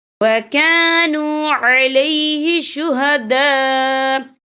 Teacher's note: یہ دیکھیں آپ کو چھوٹی سی جیم بھی لکھی نظر آ رہی ہے، تو یہ پھر جائز کی علامت ہے، تو یہاں پہ ٹھہرنا بہتر ہے۔ وقف کی صورت میں حمزہ ساکن ہو جائے گا